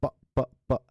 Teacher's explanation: our vocal cords remain apart and they allow the air to pass through them without vibrating. Okay? So there is this lack of vibration that gives these consonant sounds a very peculiar sound quality. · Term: voiceless consonants